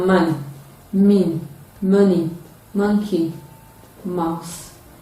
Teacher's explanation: This is another sound, and it is produced when the velum is lowered to allow free flow of air into the nasal cavity. It engages the two lips during its production, and then it is a voiced bilabial nasal sound. The spellings include M, double M, GM, MB, and MN.